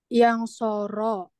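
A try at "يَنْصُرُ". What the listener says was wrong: Yan suru. bukan yan soro ya. Yan suru, yan suroni. Jadi ain fiilnya itu semuanya diganti dengan apa? Doma.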